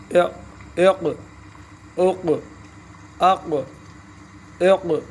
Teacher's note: حروف مستعلیہ میں سے زبان اوپر کی طرف اٹھے گی، پر ہوگا یہ حرف. اق اق اق اق سختی کے ساتھ حرف کو پکڑنا ہے.